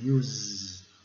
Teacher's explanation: Ele termina no Z, né? No S com som de Z.